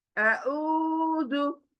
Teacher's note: अऊज़ु, वाव पेश मद्दा आया, देखिए पेश के बाद मद्दा खींचेंगे दो आवाज। अऊज़ु, जाल नरमी के साथ, और एक सिंगल, तो सिंगल आवाज आनी चाहिए जल्दी से।